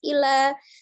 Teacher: Illa, ya, hati-hati lam tasdid lunak saja, ya, tidak terlalu dilepas. Illa, tidak juga illa, tidak berlebihan penekanannya, dia sifatnya lunak saja.